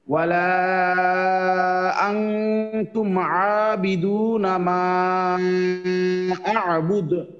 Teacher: আবার মিমের উপরে ঢেউ খেলানো সাইন আছে, তো 3 আলিফ টান, তাহলে দুইটা 3 আলিফ হইলো এখানে। ওয়ালাতে 3 আলিফ টান, মাতে 3 আলিফ টান, তারপরে আবুদ, হামজা আইন জবর আ, এটা সবাই ঠিক মতো উচ্চারণ করবেন, আবুদ।